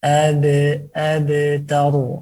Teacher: ketika qalqalah itu mulut ada sedikit nempel, walaupun dia sughra, bukan abtar, seakan tidak menempel sama sekali, tapi ada sedikit menempelnya.